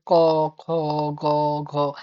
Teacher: ব্যঞ্জন ধ্বনিগুলো জিহার পিছনের অংশ কন্ঠনালীর উপরের দিকটাকে স্পর্শ করবে। নরম তালুর ওই জায়গাটা ক, খ, গ, ঘ। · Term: কন্ঠ ধ্বনি